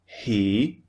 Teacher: the first sound is unvoiced put your hand over your throat so it's just air coming out of your mouth that's it we don't use our voice